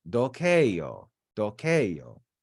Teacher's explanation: The first person singular is dokeio, and the accent is on that e because it's long.